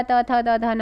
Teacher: निम्नलिखित में से दंत ध्वनि कौन सी है, दंत ध्वनि कौन सी है? तो दंत में आपका त थ द ध न आ जाता है